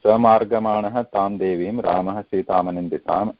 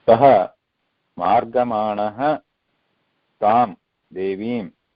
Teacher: Now saha has become sa, again visarga sandhi, because ma is after that visarga.